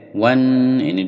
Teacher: 'wan' sengau, bacaan ghunnah, sehingga berdengung di hidung dan ditahan